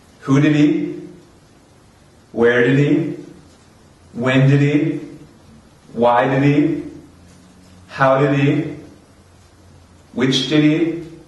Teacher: It's a little bit different with he, because we take off the h on he or many of these words.